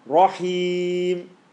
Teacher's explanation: the ra is heavy, ha is heavy, and it lands on the ya